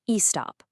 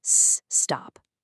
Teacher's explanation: the word doesn't start with an e sound, right? It starts with that s sound.